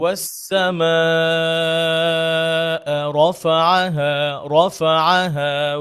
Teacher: এই আওয়াজটা লেভেলে রাখবো এবং পরবর্তী রফাআহা একটু উঁচু করব। হ্যাঁ, এতে করে শব্দটা সেপারেট শোনা যাবে।